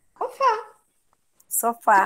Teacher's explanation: todas elas têm a sílaba tônica na última